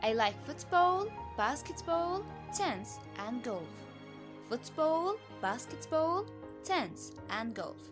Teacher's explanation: you can hear my voice went up a little in each item but to give a sense of finality to the list my voice went down and i use falling intonation on the last item i'm taking · the voice rises at the end of each item, but falls with the final item